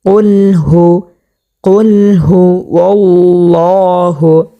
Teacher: প্রিয় দর্শক, আমরা হা যখন উচ্চারণ করব, হাটা আমরা 1 নাম্বার মাখরাজ হতে উচ্চারণ করব, হলকে শুরু হইতে একেবারে সহজভাবে